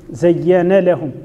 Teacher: زين لهم النون تدغم في اللام إذا كان قبلها متحرك أو كانت غير مفتوحتين. وأيضا فيها وقال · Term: الادغام الكبير, الإدغام الكبير